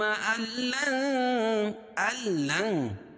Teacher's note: اسے یہاں قاعدہ ہے کہ نون ساکن یا تنوین کے بعد، یا نون ساکن ہے، نون ساکن کے بعد ادغام بلا غنہ کے 2 حرف لام اور را میں سے یہاں لام ہے تو یہاں اظہار کر کے پڑھیں گے، ظاہر کر کے پڑھیں گے. ادغام تو ہوگا لیکن غنہ نہیں ہوگا